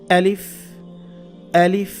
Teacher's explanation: এটা খেয়াল রাখবেন, শক্ত করে বলতে হবে। হলকের শুরু থেকে, হলক মানে কণ্ঠনালী, কণ্ঠনালীর শুরু থেকে এটা আনতে হবে।